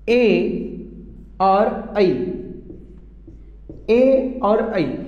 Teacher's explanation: ए और ऐ, इन दोनों का उच्चारण स्थल जो बताया गया है वो मित्र बताया गया है कंठ प्लस तालु। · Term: कंठतालु